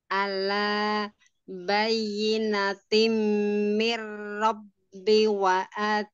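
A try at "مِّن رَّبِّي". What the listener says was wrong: mir rabbi b-nya panjang.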